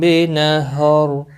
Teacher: نہر را ساکن پر پڑھا جائے گا وقف کی صورت میں